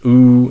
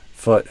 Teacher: Goose ooh is a more extreme sound. Uh foot is a more relaxed version of it.